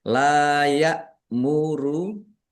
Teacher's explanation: Layak muru lam fathah alif mat tabi'i panjang 2 harokat. Hamzah sukun ya muru dibaca ringan jangan keliru dengan ain sukun atau kaf sukun